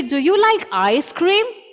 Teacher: if the entire thing is about ice cream then the stress should be on ice cream